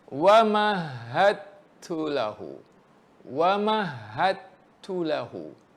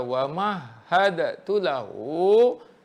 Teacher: Kalau saya baca wa mahadatu lahu, saya tak idghamkan, tak masukkan bunyi dal tu ke ta.